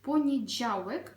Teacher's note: м'який звук Ж а також літера в дуже чітко потрібно вимовляти це слово